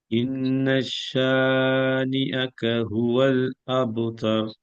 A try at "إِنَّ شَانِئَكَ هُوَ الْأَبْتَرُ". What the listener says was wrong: இன்னஷா அண்டு ஷத்துக்கு sorry ஷீனுக்கு சத்து வைக்க கூடாது. இந்த ஷீன்ல சத்து இல்லனா இன்னஷானிஅக ஷே தான் வரணும். இன்னஷான்னு வரக்கூடாது.